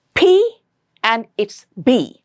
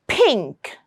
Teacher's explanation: P and B are bilabial which means both your lips will have to come together to produce this sound. And these two sounds are also closive.